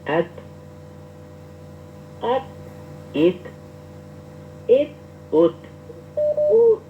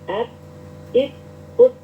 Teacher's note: Ujung lidah. dengan gusi atas atau ujung ee pangkal gigi seri atas ya.